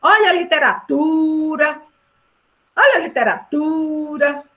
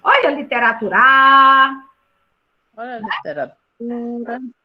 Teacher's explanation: Quando eu falo literatura, qual é a sílaba forte? Literatura. É o tu. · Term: sílaba tônica